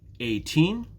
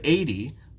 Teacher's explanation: when we speak the stress is on the second syllable 18 and when we have 80 the stress is on the first syllable